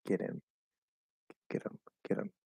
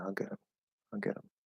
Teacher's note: Potentially, you can also reduce him to Him is probably most commonly going to reduce to im without any other reduction. We just drop the h.